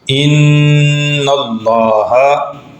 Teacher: یہاں پہ لام سے پہلے نون ہے اور اس پر زبر ہے، اس لیے لام کو موٹا ادا کیا جائے گا